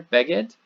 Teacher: the accent is on the first syllable